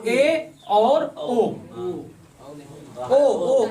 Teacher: आधा बंद। ऐसे कौन से वर्ण हैं जिनमें मुख हमारा आधा बंद होता है? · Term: अर्ध संवृत